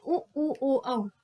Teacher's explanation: वृत्ताकार वह जिन स्वरों के उच्चारण में होठ अह बिल्कुल वृत्त हो जाते हैं, गोलाकार हो जाते हैं तो उनको वृत्ताकार कहते हैं